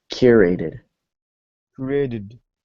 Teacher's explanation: So Created. the emphasis is in the first syllable. Curated.